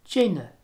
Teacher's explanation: This is a weak N, and it's essentially the same in broad and slender position, as well as being very similar to an English N.